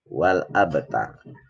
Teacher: Ini ada qalqalah sughra karena huruf ba-nya berharokat sukun.